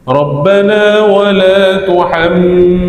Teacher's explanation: tengok tuhammilna ada mim sabdu kat situ. Dengung ya.